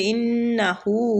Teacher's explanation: ہو کو ایک الف کھینچیں گے